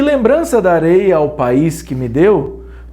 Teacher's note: os monossílabos que, ao, me, o e e são átonos, visto que são pronunciados tão fracamente que se apoiam na palavra subsequente. Já os monossílabos, representados por deu e sei, demonstram ser dotados de autonomia fonética, caracterizando, portanto, como tônicos.